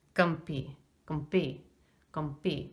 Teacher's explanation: Now notice that the vowel is reduced in rapid speech to gumpi, gumpi, gumpi.